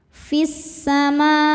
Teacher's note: lam menghadapi huruf syamsiyah yaitu sin. Cara bacanya alif lam tidak dibaca.